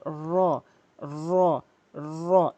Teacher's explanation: জিহ্বার আগাটি উল্টিয়ে উপরের তালুর সঙ্গে লাগাবেন। জিহ্বার আগাটি উল্টিয়ে উপরের তালুর সঙ্গে র র র এভাবে উচ্চারণ করবেন।